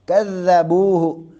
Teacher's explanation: ذال کا مخرج جو ہے ذال کی ادائیگی سا والی ہے، جیسے سا کو ادا کرنا ہے ویسے ہی ذال کی ادائیگی ہے ، دونوں نیچے اوپر والے جو دانت ہیں زبان کا اگلا